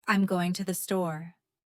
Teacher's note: Let your voice rise slightly on going in store. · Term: rise and fall